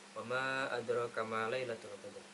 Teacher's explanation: Yang pertama adalah terdapat hukum bacaan mad jaiz munfasil karena terdapat mim yang berharakat fathah, setelah fathah ada alif panjang, dibaca panjang selama 2,5 alif yaitu 3 harakat karena terdapat mad tabi'i yang setelahnya terdapat hamzah.